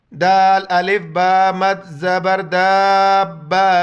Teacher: دیکھیے اس طرح کریں گے اس کو، آپ دیکھیے طریقہ، پہلے دال، پھر الف، پھر مد، پھر زبر، دال الف با، دال الف با مد زبر داب، زبر با داب، دال الف با مد زبر داب، زبر با داب۔ اس مد کی وجہ سے چار الف میں ادھر کھینچنا ہے، اور با پر شد ہے، اس کی وجہ سے سختی سے پڑھنا ہے اس کو